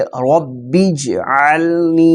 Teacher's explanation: نون کو لمبا اس لیے کر رہے ہیں کہ یا مدہ ہے، یا ساکن ہے اور اس سے پہلے زیر ہے۔ ہم نے مدنی قاعدے کے سبق نمبر 7 کے اندر حروف مدہ کا بیان پڑھا ہے، اس کے اندر ہم نے یہ چیز پڑھی تھی کہ یا ساکن ہو اور اس سے پہلے زیر ہو تو یا مدہ ہوتا ہے، اور حروف مدہ کو ایک الف کے برابر کھینچ کر پڑھتے ہیں۔